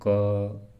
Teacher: जैसे हम क ख बोल रहे तो उसमें क के साथ अ जुड़ रहा है ख में भी र है तो इसमें स्वरों की सहायता ली